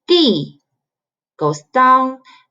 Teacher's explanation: The fourth tone you go ah, go all the way down.